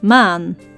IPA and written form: ma:n (Maan)